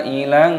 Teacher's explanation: mad wajib muttasil dibaca 6 harokat, 6 ketukan